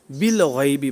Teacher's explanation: لیکن ال کا جو حمزہ ہے، یہ لام تعریف کا جو حمزہ ہوتا ہے وہ وصلی ہوتا ہے، تو وصل کی وجہ سے گر گیا، یعنی اصل میں تو یہ تھا نا بی الغیبی، تو وصل کی وجہ سے جو ہے نا حمزہ گر گیا اور با لام کے ساتھ مل گیا، بالغیبی بن گیا، ٹھیک ہے۔ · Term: حمزہ وصلی